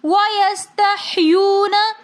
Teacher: وَيَسْتَحْيُونَ، یون میں واو ساکن اور سے پہلے پیش تو واو مدہ ہونے کی وجہ سے ہم ایک الف کی مقدار کھینچ کر پڑھیں گے